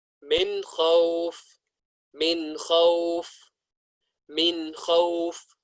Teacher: And idhar means to make clear. And so we are going to make the noon sakin clear.